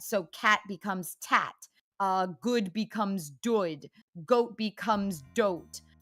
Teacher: In the case of fronting, that would be where your G's and your K's, which are all produced at the back of your mouth, are turning into T's and D's instead